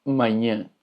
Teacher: la A con tilde se pronuncia de una manera nasal